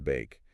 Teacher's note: it now what about bake that's the dipthong we talked about it starts with the father a and transitions into the seat e